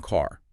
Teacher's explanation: Now, think of the A in car. It's a long open sound.